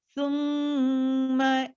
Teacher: मीम पे गुन्ना, 2 counts.